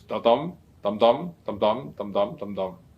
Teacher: The pentameter means a meter that consists of 5 feet in each line. And then each foot is made up of an unstressed syllable followed by a stressed syllable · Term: iambic pentameter